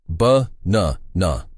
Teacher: For example, in the word banana, the stress is on the second syllable, ba-na-na. You say that middle part a little louder and longer than the others. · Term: word stress